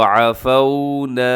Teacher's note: واو ساکن سے پہلے زبر ہو تو واو لین ہوتی ہے، نرمی سے پڑھتے ہیں، مجہول نہیں پڑھتے، جھٹکا نہیں دیتے